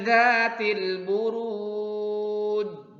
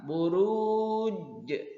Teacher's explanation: Ketika membaca jim di sini, ketika diwakafkan, ketika berhenti membacanya, maka terjadi qalqalah. Huruf jimnya ada pantulan